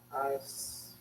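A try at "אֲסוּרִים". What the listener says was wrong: Not o. As. Asurim. You said O. You said O. You said O. Asurim.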